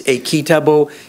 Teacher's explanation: even though it's completely toneless, that is unmarked, there are no high tones in it, no lexical tone. Rather, the high tone comes exclusively from intonation.